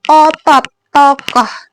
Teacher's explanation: O yang posisi lidahnya itu madya bawah, menggunakan lidah bagian belakang, dan posisi mulutnya itu semi terbuka.